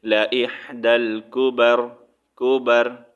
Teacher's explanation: آیت کمپلیٹ ہو رہی ہے تو یہاں پر را کو ساکن کریں گے